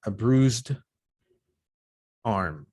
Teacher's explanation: bruised this one is voiced because the z is voiced there is vibration